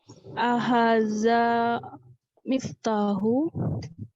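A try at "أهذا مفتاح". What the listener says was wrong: Tanwin, Bu. Miftahun. Tanwin semua, Bu ya, kata saya.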